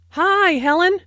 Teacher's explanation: notice that the i sound in high is extended to show that is very pleased